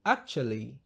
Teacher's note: t inabadilishwa na kutamkwa cha. So badala ya kusema actually tunatamka actually.